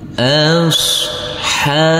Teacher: huruf Shad tidak boleh kita pantulkan karena ini bukan bacaan Qalqalah